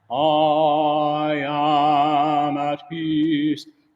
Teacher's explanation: put a little more ah in your am. I am at peace.